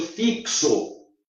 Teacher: Mas a gente tem 5 fonemas, porque o X tem som de CS, ou seja, tem 2 sons.